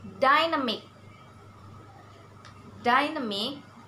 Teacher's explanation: Dynamic, we have to stress in first syllable.